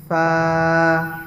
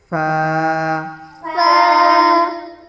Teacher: এই উপরে যে দুই দাঁত আছে, ওই দাঁত নিচের ঠোঁটের মানে ঠোঁটের সাথে লাগবে, দাঁতের আগা